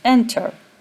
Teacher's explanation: the stress is on the first syllable, not the second syllable. So the second syllable is unstressed, and therefore the final consonant is not doubled with the addition of ing and ed.